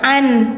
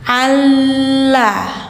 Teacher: Jadi si suara N-nya jadi suara L. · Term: idgham bila gunnah